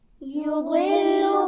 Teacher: يضل، ضاد کے مخرج کا خیال رکھیں گے. زبان کا کنارہ اور اوپر کی داڑھوں سے ادا کیا جاتا ہے